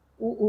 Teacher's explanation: उ ऊ का उच्चारण स्थान ओष्ठ है।